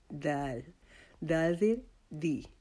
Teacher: سامنے والے جو ہمارے 2 دانت ہیں ان کے جڑ کے ساتھ لگا کر دال کو ادا کریں گے